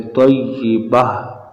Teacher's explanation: جب گول تا پر وقف کریں، رکیں، تو یہ گول تا کو ہا ساکن سے تبدیل کرتے ہیں